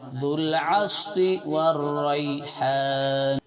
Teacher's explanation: یا بھی حرف لین میں سے ہے، اس کو نرمی سے جلد پڑھیں گے